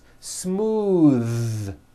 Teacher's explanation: in smooth is voiced most foreign speakers say this word incorrectly they say smooth with an unvoiced th but it's voiced